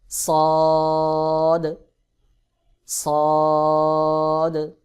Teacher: জিহ্বার আগা সামনের নিচের দুই দাঁতের পেট ও আগার সঙ্গে লাগাইয়া সদ উচ্চারণ হয়